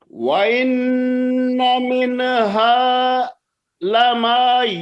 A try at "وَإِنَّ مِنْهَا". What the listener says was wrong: یہ نہیں، آپ نے نون میں قلقلہ کر دیا، من ہا پڑا ہے، وہ کل والی غلطی. من ہا آگے من ہلما.